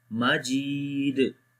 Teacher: So this kalkala will be strong kalkala, and the kalkala letter is coming in the end, that's why we make strong kalkala here